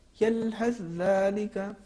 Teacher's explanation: حرف ثا کا دیکھیے یلحث ذالک, ہم ادغام کریں گے تو ہو جائے گا یلحث ذالک, حرف ثا کا تلفظ نہیں ہوگا